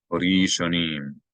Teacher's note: The aleph is silent because there's no vowel above or below it. So it's not pronounced as a glottal stop. It's as if it's not there.